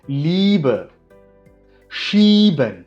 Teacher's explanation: ஈ ஏ ரெண்டும் சேர்ந்து வந்துச்சுன்னா அதை ஈன்னு உச்சரிக்கணும். நெடில்ல ஈன்னு உச்சரிக்கணும்.